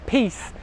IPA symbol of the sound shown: i: